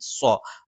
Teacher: ഇയ്യ നാവിന്റെ മധ്യഭാഗം മേലെ എണ്ണാക്കിൽ നാവിന്റെ അറ്റം മേലെ മുൻപല്ലിന്റെ മോണയിൽ സ്വ നാവിൻറെ കൂർത്ത അറ്റത്തിന്റെ മുകൾഭാഗം രണ്ടു വരി മുൻപല്ലുകൾക്കിടയിൽ പിന്നിലായിട്ട് നിൽക്കുകയും നാവിന്റെ മധ്യഭാഗം മുകളിലേക്ക് ഉയരുകയും ചെയ്യും സ്വ അതൊരിക്കലും മലയാളത്തിലുള്ള സ്വ എന്ന് ഉച്ചരിക്കാൻ പാടില്ല സ്വ എന്ന ഉച്ചരിക്കുമ്പോൾ സ്